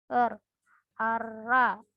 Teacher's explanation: R disebut artikulasi getaran dan cara pengartikulasinya alveolar sama dengan fonem T dan D. Hanya saja R itu cara pengartikulasinya bergetar seperti R, ara.